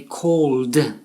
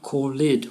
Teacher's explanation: So the word call, we say called, one syllable, and not called, which is two syllables and incorrect.